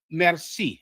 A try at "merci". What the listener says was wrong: Merci. Say it without the R. So in French, it will be merci. In Creole, it's merci.